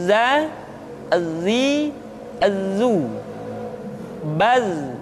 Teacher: dalam huruf latin tetapi ingat huruf dza bersifat Al Jabbar artinya ketika kita mengucapkan huruf dza suara kita mengalir akan tetapi nafas tidak boleh mengalir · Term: huruf za